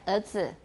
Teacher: Sometimes you have no R at all in Taiwan.